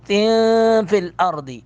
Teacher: نون کی آواز ناک میں چلی جائے گی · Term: حروف اخفا